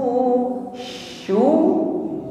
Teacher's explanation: mengucapkan shin dengan tafashi, menyebar angin